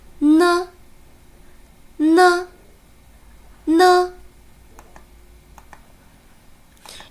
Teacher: 舌尖顶住上齿龈，挡住气流，让气流通向鼻腔，从鼻孔出来，声带稍颤动。